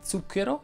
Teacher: la z quella sorda non è altro che una t seguita da una s senza l'intervento delle corde vocali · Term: z sorda